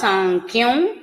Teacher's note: సాంఖ్యంలో ఉన్న అనుస్వారం వకారం అవుతుంది